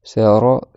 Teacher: D'accord, ra, c'est le bout de la langue qui vient taper derrière les dents. C'est pas du tout avec la gorge, donc faut faire avec le bout de la langue.